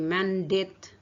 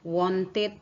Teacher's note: semua kata dasar itu diakhiri dengan bunyi alveolar stop T atau d maka setelah ditambahkan Ed ini akan ed-nya akan diucapkan dengan it